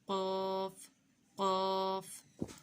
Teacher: قاف کا مخرج ہے زبان کی جڑ کوے کے قریب جب نرم تالو سے لگے۔ قاف موٹے حروف ہے، ٹھیک ہے، زبان کی جڑ کوے کے قریب جب نرم تالو سے لگے۔